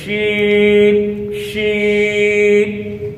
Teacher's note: آواز منہ میں پھیل جاتی ہے شین کی ادائیگی میں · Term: حروف تفشیش